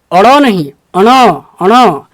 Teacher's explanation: अड़ा एक तो मूर्धन्य पर होगा, दूसरा नाक से भी होगा, तब जाके आप अणा बोल पाएंगे।